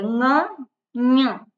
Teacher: જેને નાકની સહાયથી બોલવામાં આવે એને કહેવાય અનુનાસિક. અને એનું જે સ્થાન છે એ આપણે ભવિષ્યમાં જોઈશું.